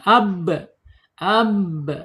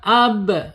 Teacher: Bi asyafatain dua bibir terkatup bi ya. Kemudian secara sifatnya ada di asyiddah tertahan ketika dia sukun suaranya.